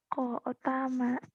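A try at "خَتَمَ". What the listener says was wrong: Khotama. Ko-nya jadi ko kamu mah. Ko-nya jadi ho ya, ketuker-tuker. Khotama.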